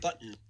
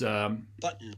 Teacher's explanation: So there's 2 syllables, the second of which has a peak as just an N. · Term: Syllabic N